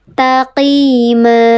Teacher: Dibacanya panjang dua harakat, tanwinnya hilang.